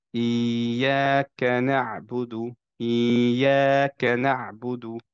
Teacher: তার মানে হচ্ছে, লেটস সে যে আমরা যদি টিভির এক্সাম্পল দিই, যে টিভির রিমোট দিয়ে যদি ভলিউম বাড়ায় ফেলে তাহলে যেটা হবে সেটাই। সো ইয়াকে আমি তখন ইয়াকে একটু উঁচু ভয়েসে পড়ে আবার কায়ের সময় নিচে নেমে যাব।